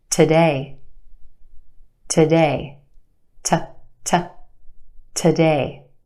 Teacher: The first syllable is where we have our schwa sound